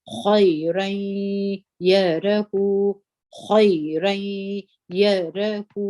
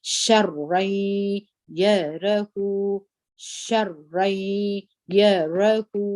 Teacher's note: دا غنه چې ده دا د دغه تنوین د نون ده چې موږ په یا کې ګډوو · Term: ادغام